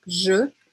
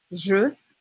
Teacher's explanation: Então, seria je, sendo que esse E é o E francês, que é aquele E bem fechado, que se aproxima à letra O, né? Je, tem que fazer um começo de biquinho aí.